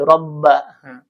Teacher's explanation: ba di sini ada penekanan karena ada tasydid